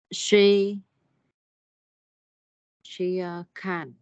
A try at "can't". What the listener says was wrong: She, nếu mà không thể thì có âm T ở phía sau à? Can't. She can't.